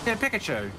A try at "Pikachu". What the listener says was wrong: No, you're saying pick, not peek.